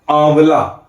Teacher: तो कोई भी अनुनासिक स्वर होगा उसमें क्या बना होगा चंद्रबिंदु ठीक है जैसे कि आ है ना आंवला ठीक है आम तो आ जब आम के लिए जब मैंने आ कहा तो जो हवा है आ का उच्चारण करते समय वो केवल मुख से निकली नाक से नहीं लेकिन जब मैंने आंवला कहा तब जो हवा है वो मुख के अलावा नाक से भी निकली और ये दर्शाने के लिए इसका इसका संकेत बनाया गया है ये चंद्र बिंदु।